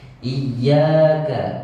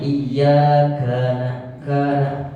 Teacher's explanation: huruf K desisnya kecil saja Pak.